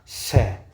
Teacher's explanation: स, बिल्कुल बारीक पतली लाइन में से बाहर निकलना पड़ता है इन वर्णों को। देखो स है, स है, बिल्कुल पतली लाइन में से इनको बाहर निकलना होता है, इसलिए इन्हें संघर्षी व्यंजन कहा जाता है।